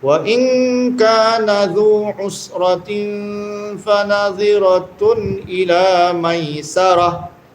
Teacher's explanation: ta marbutah bila waqaf jadi ha